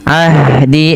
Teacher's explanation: alirkan nafas hannya karena dia sifat hames